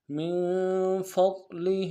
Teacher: نون ساکن میں یہاں پہ غنہ کریں گے اخفا کے ساتھ، فا کو ضاد کے ساتھ ملانا ہے، ضاد کو موٹا ادا کریں گے